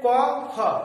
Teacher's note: ক, খ উচ্চারণের সময় স্বরতন্ত্র কেঁপে উঠছে না, তাই এটা হলো অঘোষ